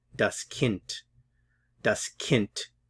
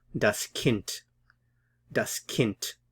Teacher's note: the D at the end here sounds a lot like the T sound